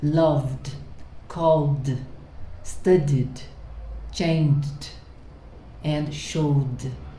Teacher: So when you feel this vibration, when you pronounce the verb, and at the end of the verb, if you feel this vibration here, v, v, it's not here, it's here, v. So when you have ed, the sound is d, loved.